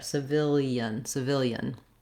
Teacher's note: because we're linking those vowels i don't just say e but it ends up with a little bit of a y gliding sound there